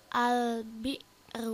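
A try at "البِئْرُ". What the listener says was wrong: Tapi jangan ada al, jangan ada e-nya ya, al-nya.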